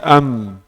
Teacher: Mim keluar dari mana? Dua bibir.